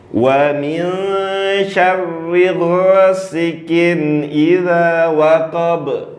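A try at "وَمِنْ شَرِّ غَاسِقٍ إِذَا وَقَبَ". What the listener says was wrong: Ulangin deh, qaf jangan pakai hamas. Ghasiqin.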